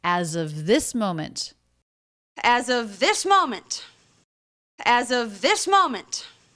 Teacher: As of, those two words linked together really smoothly with a Z sound.